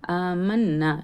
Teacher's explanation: ஆமன்னா, நூன் தஸ்தீத் இருக்குது. நூன் தஸ்தீத் வரும்போது நம்ம குன்னா பண்ணுவோம். அந்த நூனில் அலிஃப் மத்தும் இருக்கிறதுனால குன்னா பண்ணி 2 ஹரக்கத் நீட்டணும். · ஹம்சாவுக்கு மேலே கடா ஜபர் இருக்குது. ஸோ நம்ம அந்த இடத்துல கடா ஜபருக்கு நம்ம என்ன பண்ணணும், 2 கவுண்ட் நீட்டணும். ஓகேங்களா. ஆமன்னா, நூன் தஸ்தீத் இருக்குது.